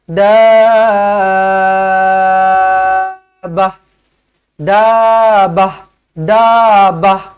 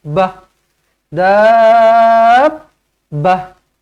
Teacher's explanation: bila kita dah baca panjang Da tu dengan enam harakat okey kemudian kita lekatkan dekat ba Kena lekatkan dulu kena lekatkan dulu dia tak boleh daah daah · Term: mad lazim kalimi musaqal